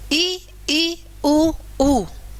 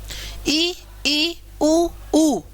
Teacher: इनको चारों को बोलते समय हमारा मुख का घेरा यानी कि हमारा जो मुंह है वह लगभग बंद ही रहेगा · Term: संवृत